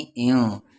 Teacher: اب یہ الف ہے، اس الف پر زیر ہے تو ای کو نام ان پر نون ساکن کے بعد سین ہے اور سین حروف اخفا ہے تو ان نہیں ایوں